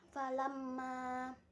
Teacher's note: memnya bertasydid dibaca gunnah